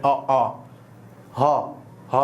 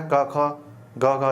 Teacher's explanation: जिनकी आवाज अपने कंठ गले से आती है